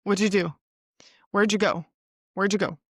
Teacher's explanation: the whole first part is all blended together and then you only hear the main verb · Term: reduced speech